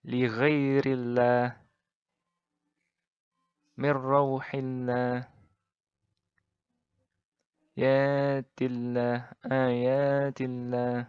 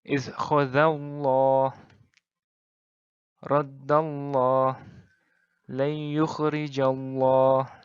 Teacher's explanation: Jadi, kalau I, maka ringan. Kalau A atau U, jadi berat.